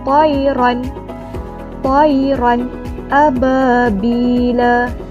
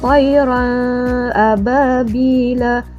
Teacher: tak boleh dengung, dia kena sebut ran ni dengan jelas. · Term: izhar halqi